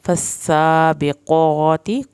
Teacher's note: क़ाफ को पुर करके मोटा पढ़ना है। सबक़ा बा पे कलकला और क़ाफ को मोटा।